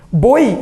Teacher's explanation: O ditongo é oral, deu certo, mas é fechado.